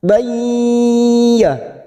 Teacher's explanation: fathah tanwin pada huruf ba bertemu ya, namanya idgham bi gunnah. Siap masuk pada huruf ya, kita tekan 3 harokat.